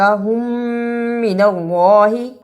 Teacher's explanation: میم ساکن کے بعد میم آیا ہے، اسے ادغام شفوی کہتے ہیں